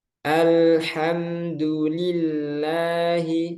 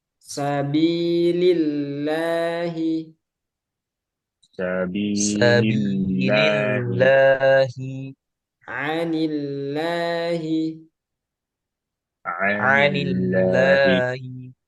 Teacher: Kalau sebelumnya kasroh, berarti ini pangkal lidahnya turun. Kalau tadi tebal, posisi pangkal lidahnya naik. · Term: tarkik tipis